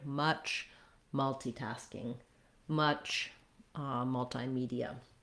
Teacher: The first vowel in multi also is vowel schwa.